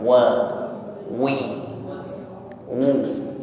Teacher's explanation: Jadi huruf waw ini suaranya terdengar ringan ya, tipis, tidak berat